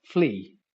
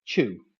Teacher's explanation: These are then vowels that end in a glide. They involve a movement of your tongue to produce them.